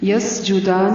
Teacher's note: یسجدان سین کو باریک پڑھنا ہے، دال کھڑی زبردہ ہے.